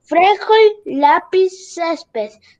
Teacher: Palabras graves, tienen la sílaba tónica en la penúltima sílaba.